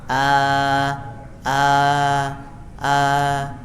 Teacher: keluarnya hamzah ini dari pangkal tenggorokan. Ya, seperti kita mengucapkan huruf A, I, U.